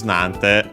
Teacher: Nante from Nani, interrogative pronoun, which means what. Because of the additional te, then the ni gets contracted into simply n.